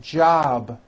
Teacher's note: It's not jop with an unvoiced P. Keep the voicing going throughout the whole word. Job with a voiced B ending.